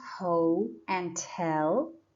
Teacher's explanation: we have two syllables ho and tell and the stress is on the second syllable tell that's why apostrophe comes before the second syllable so apostrophe comes